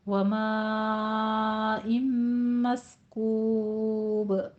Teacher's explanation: مائن میں مد متصل واجب ہے، 5 کاؤنٹ کرنا ہے